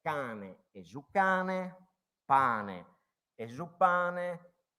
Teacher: sempre una conservazione delle occlusive